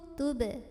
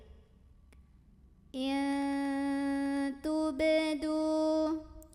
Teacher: huruf ba ini dipantulkan dengan pantulan yang kecil saja dan tetap mengalir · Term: qalqalah sughra